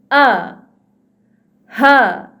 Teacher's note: pertamanya daripada pangkal kerongkong kita, itulah dia huruf A dan juga huruf H. Huruf A, tuan-puan, cuba tuan-puan sentuh kerongkong tuan-puan dan rasakan getaran apabila kita menyebut huruf A dan juga huruf H.